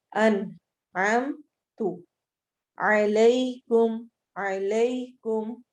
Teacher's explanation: अनअमतु अन नून को वाज़िया पढ़ना है, छुपाना नहीं है, बिल्कुल क्लियर होगा।